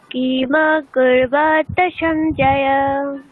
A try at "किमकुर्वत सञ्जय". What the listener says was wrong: আচ্ছা, আমি মানে একটু কিমা ওখানে থেমে যাচ্ছে, সমা ওখানে থেমে যাচ্ছে, ওগুলো থামলে হবে না, ওগুলো হ্রস্ব তো। আর সবাহ ওখানে বিসর্গ উচ্চারণ করেন, ঠিক একইভাবে এখানে উচ্চারণ করছেন কিমা কুরুবতা। মকারের ওখানে গিয়ে অতক্ষণ থামলে হবে না, কিমা কুরুবতা সঞ্জয়া, এরকম হবে।